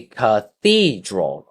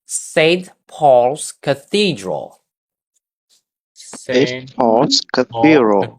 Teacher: Three syllables. And the stress is on number 2. It's going to be cathedral, okay?